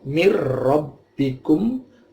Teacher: nunnya tidak jelas, masuknya langsung ke ro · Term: idgham bila gunnah